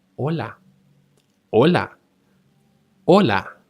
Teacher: the H sound, which is mute if it happens before a vowel